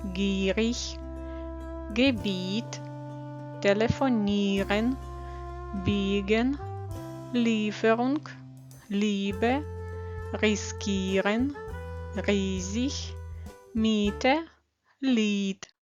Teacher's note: і е читаємо як довгий і